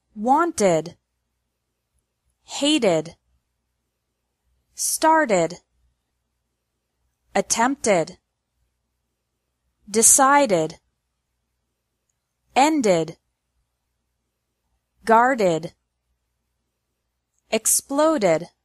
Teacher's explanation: pronounced like Ed with an extra syllable after verbs ending in a t or a D sound